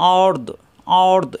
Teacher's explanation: আর মিলবে দদের সাথে, দদ হইলো জিব্বার গোড়ার কিনারা উপরের মারি দাঁতের গোড়ায় লাগিয়ে, আর্দ আর্দ এরকম হবে।